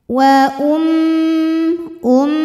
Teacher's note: hukum gunah musyaddadah atau wajibul gunah atau musyadadah karena mim bertasdid cara bacanya dengung bunyi m-nya tahan sampai ada suara masuk hidung kurang lebih dua harakat